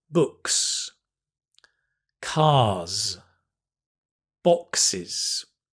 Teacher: there are three sounds, right? There's /S/, /Z/, /IZ/.